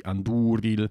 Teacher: it has to be anDÚril, because the u is a long vowel